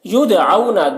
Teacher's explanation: دال میں قلقلہ ہوگا، دال حروف قلقلہ میں سے ہے، اس کے اوپر جزم ہے